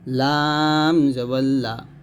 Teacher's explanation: লামটা পাতলা হবে তবে জিহ্বার আগার কিনারা উপরের দাঁতের সঙ্গে লাগবে